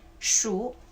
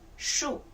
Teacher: this character, as a verb, it must be the 3rd tone. Okay, as a noun, is the 4th tone.